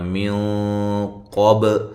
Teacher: یہاں موٹا اخفا ہو رہا ہے، نون ساکن کا اخفا ہے، مفخم اخفا ہے، موٹا ہے۔